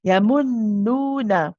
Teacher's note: Be careful not to then stretch the noon at the end. This is only one count.